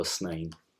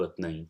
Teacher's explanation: the educated speakers of Hijazi mostly prefer the seen sound